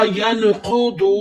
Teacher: वाव मद्दा हो रहा है, वाव साकिन उससे पहले पेश, तो एक अलिफ की मकदार खींच कर पढ़े